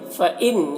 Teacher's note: فَإِن یہاں پر نون میں اظہار ہو رہا ہے،